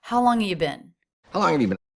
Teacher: So he drops the H and the V and leaves us with just a vowel, which he reduces to the schwa, and he attaches it to the word before and the word after. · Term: reduction